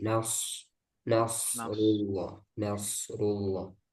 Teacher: kemudian nanti sadnya tebalkan lagi